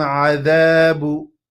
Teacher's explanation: The tongue is going to come between the teeth, and we're going to extend that because of the alif, and then the ba with a dhamma.